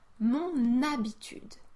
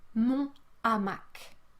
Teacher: You can really hear that I carry the last consonant sound into the next word. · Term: liaison